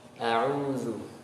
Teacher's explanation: ada sifat tengah-tengah di antara mengalir dan tertahan, termasuk di dalamnya huruf ain. Jadi tengah-tengah ya, setengah mengalir setengah tertahan.